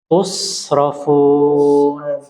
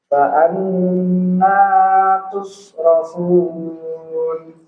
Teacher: Sekali lagi huruf shad, ingat jangan dikolkolah.